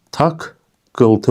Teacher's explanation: burada birinci cingiltili samit kar samitlə əvəz edildi